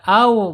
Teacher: Kemudian asyidah juga tidak mungkin karena wawu ini tidak tertahan suaranya, justru dia mengalir au, berarti ada di ar-rakhawah ya.